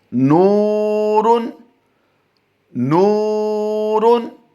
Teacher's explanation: نون واو پیش نو، واو ساکن ما قبل مضموم ہے، اس لیے اس کو لمبا کر کے پڑھیں گے۔ اور آگے ہے را 2 پیش رن، نورن، را پر 2 پیش ہوں تو بھی را کو پر پڑھا جاتا ہے۔